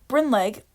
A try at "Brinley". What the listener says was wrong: The G is silent.